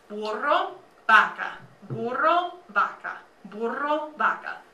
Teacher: It's just kind of like you touch your top teeth to your bottom lip and you say victory. In Spanish, the B and the V sound a lot alike, and it's kind of halfway between a B and a V.